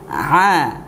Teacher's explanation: Adapun huruf ain keluarnya ialah dari tenggorokan bagian tengah.